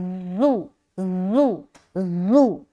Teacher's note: उसके बाद हुज़ुआ, हा पेश हु, जा पेश जू, जा में सीटी की आवाज़ आएगी, सख्ती से अदा करेंगे,